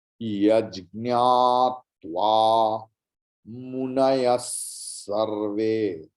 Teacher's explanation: Yajñatva munayas sarve. विसर्ग के बाद दंत सकार है, इसलिए सा होगा विसर्ग का उच्चारण